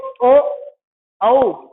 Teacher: इनका उच्चारण स्थान होता कंठ और होठों से। ठीक है, कंठ ओष्ठम ये दो शब्द हैं, कंठ और होठ।